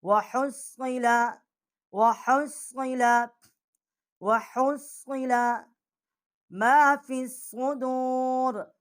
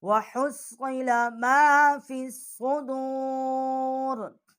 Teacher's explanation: اور صاد جو ہے اس سے آواز جو ہے وہ سیٹی کی سی بھی نکلتی ہے، جیسے سین کی آواز ہوتی ہے